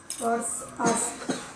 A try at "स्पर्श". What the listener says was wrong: मुझे लगता है किसी को वो स नहीं आता। स्पर्श, स्पर्श,